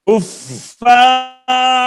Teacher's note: را زیادہ لمبا ہو گیا ہے، جتنا کفا اتنا ہی را